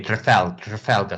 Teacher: So the stress is on the second syllable.